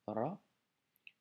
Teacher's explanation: c'est le fameux R roulé